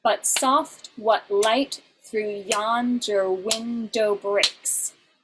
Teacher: you have an alternating pattern of an unstressed and then a stressed syllable five times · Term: iambic pentameter